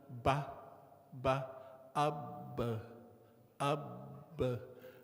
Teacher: No sound or air coming through the nose